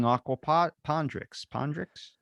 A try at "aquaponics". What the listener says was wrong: There isn't a D.